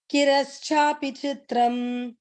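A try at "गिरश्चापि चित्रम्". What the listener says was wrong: Kirk மேல 3 இருக்கு பாருங்க. Giraschapi chitram. Giraschapi chitram.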